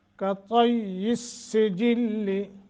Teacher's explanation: मजबूती के साथ दोनों जगह सीन भी मुशद्दद है और लाम भी और या भी